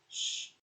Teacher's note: the constriction is made immediately behind the alveolar ridge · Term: post alveolar